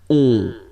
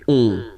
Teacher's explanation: you don't hear any N, so it's really on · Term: nasal